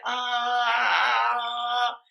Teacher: it's the same vowel just a very neutral vowel it's called tongue down lips passive it's not protruding